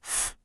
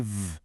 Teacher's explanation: For a lot of words that end in f or fe, that soft f sound turns into a harder vibrating vv sound for the plural